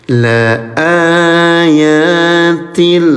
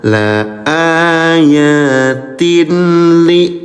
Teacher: Pertemuan tanwin atau kasratain surat lam dengan tasdid menghasilkan kaidah tajwid yang disebut idgham bila ghunnah. Cara membacanya adalah dengan menggabungkan bunyi tanwin ke dalam huruf lam tanpa menahannya. · leburkan saja bunyi tanwinnya ke huruf lam, ya, tanpa ditahan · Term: idgham bila gunah